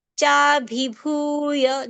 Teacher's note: There are two mahapran sounds. We have to give more strength and more breath to both of them. What happens is the first mahapran sounds get correct, but the second mahapran sound in the same word may get alpapran.